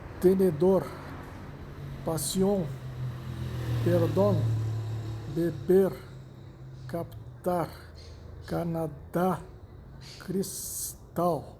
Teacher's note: La sílaba tónica es la última. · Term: agudas